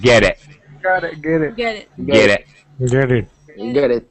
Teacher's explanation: the middle T is surrounded by two vowel sounds so it sounds like a d